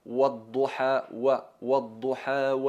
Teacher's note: la letra guau es pronunciada circulando los labios y elevando el fondo de la lengua como veis en la primera imagen hay que redondear hay que